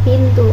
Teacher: dihasilkan dengan cara menempelkan ujung lidah pada gusi agar menghambat udara dari paru-paru udara itu kemudian dikeluarkan melalui rongga hidung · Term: konsonan nasal alveolar